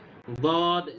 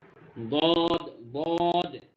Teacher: বদ জিহ্বার গোড়ার কিনারা উপরের মাড়ির দাঁতের সাথে লাগবে